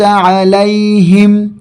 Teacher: ہا کو سینے سے ادا کیا جائے گا